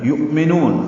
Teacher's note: حمزہ ساکن روایت حفص میں جھٹکے سے پڑھا جاتا ہے، یہ واو کی شکل میں ہے.